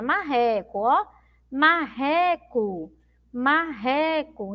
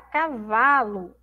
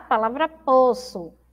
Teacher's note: olha todas essas palavrinhas terminam com o mas tem som de u